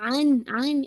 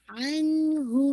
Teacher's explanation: عن ہو، ناٹ یہ عن، اکثر لوگ باؤنس کر دیتے ہیں، پورا اس کو روکیے گا کیونکہ یہ ناقص غنہ ہے، تو ساؤنڈ شوڈ بی کمپلیٹ، پورا ساؤنڈ نون کی جو ساؤنڈ ہے وہ کمپلیٹ کر کے آپ اوپر جائیں گے، عن ہو، ٹھیک ہے؟